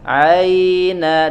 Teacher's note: Ha dan ain keluar dari wasatul halqi atau bagian tengah tenggorokan. Aina, dan tidak boleh masuk ke hidung. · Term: huruf ain